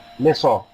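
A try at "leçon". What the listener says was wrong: হ্যাঁ লোসন, not লেসন, লোসন।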